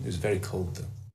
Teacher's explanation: We can see that is just missing, wasn't it? And the was, all we hear is the z at the end. And the th sound is also missing.